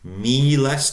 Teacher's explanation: Notice the long E. Miles, twice the length of a short vowel.